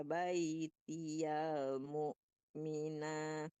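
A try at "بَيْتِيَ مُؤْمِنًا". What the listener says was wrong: Ya, ya-nya jangan tertahan.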